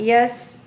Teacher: سین will be with whistling sound، سیٹی کی آواز کے ساتھ